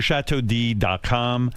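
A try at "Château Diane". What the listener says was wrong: Why are you saying D and it's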